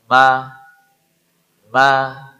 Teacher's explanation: dia suara setengahnya mengalir ke rongga hidung · ketika Ma ini masuk rongga hidung itu namanya suara ghunah